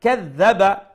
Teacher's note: Ara'ayta ufrullahan shuman, again ufrullahan shuman ikhfa. Kadhaba, make sure you pronounce the dal with a soft tone, and it's a shadda, double letter, double sound